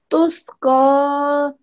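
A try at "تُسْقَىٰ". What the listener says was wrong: Okay, good.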